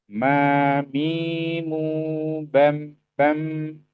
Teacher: mim itu kata beliau adalah dengan nutup dua bibir disertai dengan dengung dari rongga hidung.